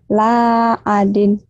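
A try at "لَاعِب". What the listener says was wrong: La adin kan panjang.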